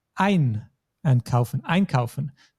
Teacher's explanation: the emphasis, the stress is always on the syllable, on the first syllable, also known as the prefix.